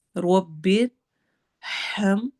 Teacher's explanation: ربر، روا باریک پڑھا جائے گا۔ ربر ہم، ہا کی آواز نکالنی ہے، گلے کے درمیانے حصے سے، تھروٹ لیٹرز میں یہ مڈل میں آتا ہے